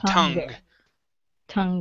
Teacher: instead of tongue, okay, with the K sound, use a G